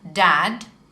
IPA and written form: dæd (dad)